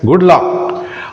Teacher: And good luck, rising at the end. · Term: rising tone